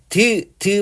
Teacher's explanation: 말 그대로 치조가 잇몸이라는 뜻이거든요. 그래서 혀끝과 윗잇몸 쪽에서 나는 소리를 치조음이라고 얘기를 해요. 그래서 대표적으로 뭐 디귿 같은 것들이 있어요.